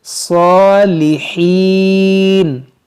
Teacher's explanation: صاد کو موٹا کریں گے اور کھڑا زبر ہے اس کو کھینچیں گے ایک الف کے برابر